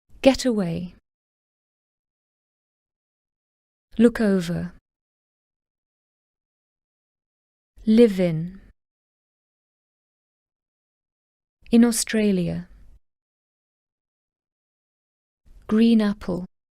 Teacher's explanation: the final consonant slides into the following vowel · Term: linking a consonant to a vowel